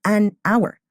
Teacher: we don't say a hour because the H is silent